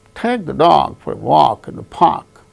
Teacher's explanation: take dog walk park only these words gain stress because they are the content words